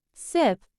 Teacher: the sound is voiceless and produced by creating a narrow passage between the tongue blade and the alvear ridge with the air passing through it